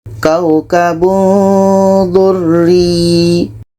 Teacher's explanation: Kita baca samar dan dengung. Contoh kaukabun durri Ketika sebut huruf tanwin kita sudah merasakan huruf da. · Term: ikhfa hakiki